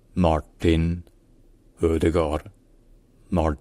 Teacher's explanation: les a sont prononcé de manière un peu plus profonde plus en arrière dans la bouche